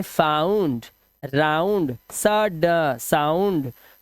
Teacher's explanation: जब किसी वर्ड में ओ यू आए तो ओ यू का जो उच्चारण है वह करना है आऊ